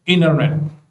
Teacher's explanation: when sound T occurs immediately after n it gets assimilated into N